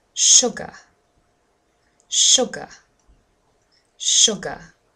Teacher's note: Did you hear where the stress was? Yes, it's on the first syllable. And if you used your pen and you started hitting the beat, you'll probably notice that automatically your hand hits the first syllable.